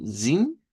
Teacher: lo hemos escuchado como zin, así, 10. con una I larga